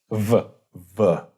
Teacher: You're like making a V sound but with just your lips. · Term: bilabial fricative